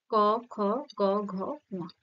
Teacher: ক জীভের পশ্চাৎ কোথায় ঠেকছে কন্ঠে তো এটা কি হবে কণ্ঠধ্বনি